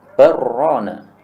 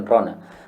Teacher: Jadi lamnya jadi hilang, masuk kepada huruf ra. Nah, ini namanya idgham, ya, barrana. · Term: idgham shaghir